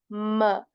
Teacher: the mem is articulated by simply joining the Two Lips right the M sound m is simply articulated by joining the